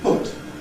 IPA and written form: pʊt (put)